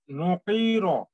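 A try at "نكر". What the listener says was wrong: টি টান হয়ে যাচ্ছে নুকির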